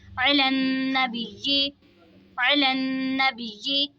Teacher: नून मुशद्दद में गुन्ना करेंगे और तशदीद वाले हुरूफ को जमाओं के साथ पढ़ेंगे